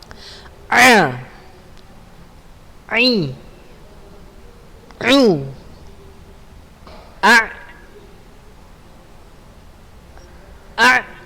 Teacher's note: Ain ada di tenggorokan tengah. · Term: huruf ain